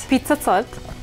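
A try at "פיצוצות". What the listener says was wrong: Did it just sounded like pizza. There's no I.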